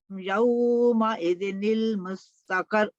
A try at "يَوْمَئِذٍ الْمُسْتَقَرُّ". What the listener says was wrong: یہاں بھی را تشدید ہے, دوبارہ ڈبل سٹرس. یہ جو مستقر را پر تشدید ہے نا آخر پہ